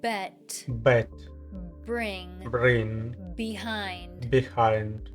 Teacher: Make sure you close your lips completely because if you don't, it won't sound right. The B sound is also voiced. So, make sure your vocal cords are vibrating before you open your lips to release the air.